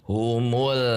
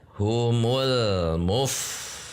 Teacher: antara bunyi al dengan mu tidak dijeda, tidak ada pelepasan suara, tidak ada ruang kosong di antaranya. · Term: bainiah